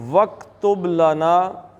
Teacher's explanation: با کا قلقلہ کریں گے، کاف کا قلقلہ نہیں ہوتا